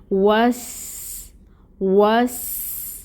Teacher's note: واو کے ساتھ اب ہم سین کو ملائیں گے، وس، ٹھیک ہے، اور سین کی صفت واضح ہوگی جو صفیر ہے، یعنی اس میں ہم سٹی کو واضح کریں گے